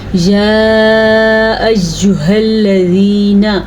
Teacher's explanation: یہ والا ہا سینے سے نکلتا ہے، حلق کے اس حصے سے جو سینے کی طرف ہو